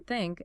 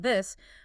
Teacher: both the voiceless as in think and the voiced as in this many languages lack these Dental fricatives